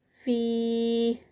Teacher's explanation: یا مد ہے تو اسٹریچ کریں گے 4 کاؤنٹس کا